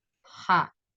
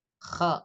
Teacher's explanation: Kalau ha itu bersih kalau ko itu kotor ya ada seraknya sedikit Ha k jadi membedakan antara ha sama ko itu di bersih